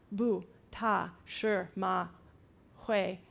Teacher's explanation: in the language it starts with the sound system of Chinese the syllable structure is very short it's just consonant vowel